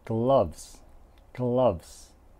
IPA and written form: ɡlʌvz (Gloves)